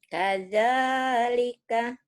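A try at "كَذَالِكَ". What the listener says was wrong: Kaza, jangan kaja, kaza. Kadzalika, kaza.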